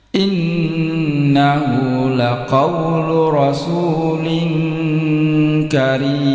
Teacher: Perhatikan tanwinnya ini tidak sejajar bertemu dengan kaf. Ditahan 2 ketukan. Gunahnya, dengungnya itu siap-siap masuk pada huruf kaf. Karim ini mad arid lisukun. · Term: ikhfa